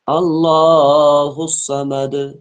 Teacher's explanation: الصاد جو ہے یہ بھی پر حروف میں سے، اس کو بھی موٹا پڑھیں گے۔